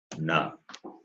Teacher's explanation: Na is, it is cerebral plus nasal. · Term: Murdanya na